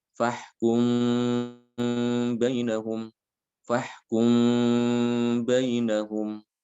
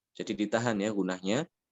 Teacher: Di sini mimnya itu dibaca secara samar, ya tidak ditekan, tidak ditasdidkan, tidak. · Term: ikhfa syafawi